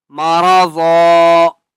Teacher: جب وقف کریں گے تو مارا ظا پڑھیں گے، ایک زبر کو چھوڑ دیں گے